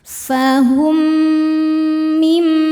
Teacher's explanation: Selanjutnya ada idgham mimi karena mim sukun bertemu dengan mim hidup. Cara bacanya mim ini dimasukkan atau dileburkan ke mim yang hidup kemudian dengungkan.